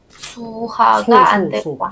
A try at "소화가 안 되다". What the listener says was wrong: 소화. 북한 수, 소. 오오오.